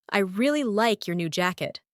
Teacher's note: The stressed words are really, like, new, and jacket. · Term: stress pattern